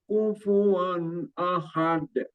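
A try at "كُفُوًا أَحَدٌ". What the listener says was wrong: Tebal lagi. Itu tebal lagi. Jadi kufuan ahad. Ahad. Anginnya itu lebih banyak lah. Jadi harus ditekan lagi, ditambah tekan. Tekanannya harus ditambah ya. Kalau dilepas dia ahad. Ahad itu hurufnya hadomir gitu.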